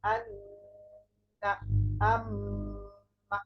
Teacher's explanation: নাকের বাসি হইতে গুন্না উচ্চারিত হয়